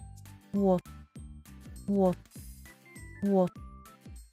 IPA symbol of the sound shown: w